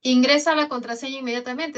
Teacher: Esto es una orden, esto es una imperativa. Las imperativas tienen tono descendente.